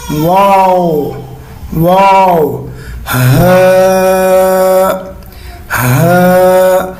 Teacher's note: شروع میں گول، پھر منہ کھولنا، پھر گول